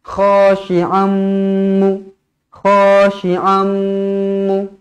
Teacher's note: Jadi idgham ma'al gunnah kena dengung.